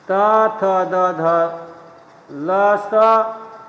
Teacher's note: चौथा है दंत्य, स्थान है दांत, स्वर व्यंजन है त, थ, द, ध, ल, स